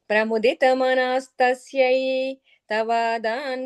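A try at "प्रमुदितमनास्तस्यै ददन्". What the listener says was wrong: At the last line, you added an extra tha. Pramudita manas tasyai vadan manim gahanashayah.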